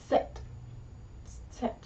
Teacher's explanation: Now, like the V and the F sound together, set is much more pronounced. It's not Z-E-T. It's got a bit of a T on the front of it.